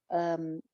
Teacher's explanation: یا مد ہے، حمزہ کی وجہ سے آ رہی ہے، دو الف لمبا